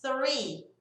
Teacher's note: Então, aqui, esse som de 2 Es vai ser um I bem agudinho, bem forte, tá? Então, né, palavras com TH mais o R, ó, a língua tá entre os dentes, só que eu faço o bico.